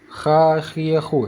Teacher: kalau huruf Kha di ujung kerongkongan